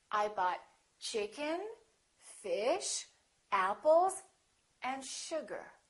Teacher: have a rising intonation I bought chicken fish apples and sugar the last one will have falling intonation so we go up up up down